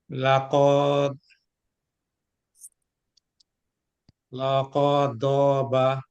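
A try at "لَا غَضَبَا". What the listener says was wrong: এখানে দেখেন লা আপনি ঠিকই পড়ছেন, কিন্তু এই জায়গাটা খালি আছে না, তার মানে এখানে কি আছে খালি থাকার কারণে? আলিফ তার মানে হবে লা গদাবা, গদাবা, গদবা।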